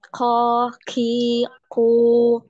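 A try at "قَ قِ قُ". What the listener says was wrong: Malah di sini anti majukan masih maju, masih ke depan. Ya, makhrajnya masih di depan. Yang benar itu ketika anti bilang mustaqim, itu sudah benar makhrajnya di situ. Mustaqim, mustaqim, qim, qim.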